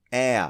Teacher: the easiest way for Japanese people to pronounce it is as a diphthong, [eə].